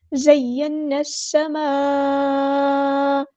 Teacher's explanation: Connected مد ہے، مد متصل ہے. 4 یا 5 کاؤنٹ ہم نے اس کو لمبا کرنا ہے